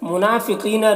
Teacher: منافقین نون میں کھڑا زبر ہے، کھڑا زبر الف مدہ کی طرح ہوتا ہے تو اسے ایک الف کے برابر کھینچیں گے۔ فقینہ قوف کو پور پڑھیں گے، یہ حروف مستعلیہ میں سے ہے۔